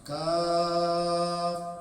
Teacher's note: Dibaca kafnya mad 6 harakat